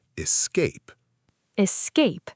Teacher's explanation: E-S-cape. The stress is on cape.